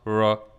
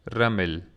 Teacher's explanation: notice that it's a rolled R it's not raw it's we roll the tongue with it this